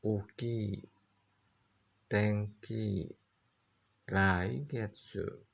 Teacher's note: merendah setelah mora yang pertama